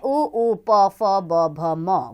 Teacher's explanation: ओष्ठ्य में उ, प, फ, ब, भ, म वर्ण आते हैं। ऊपर नीचे के होंठ इनका उच्चारण स्थान है।